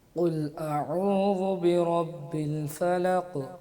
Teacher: حمزہ اور عین کو مکس نہیں کرنا, اس میں گول گول نہیں کرنا اس کو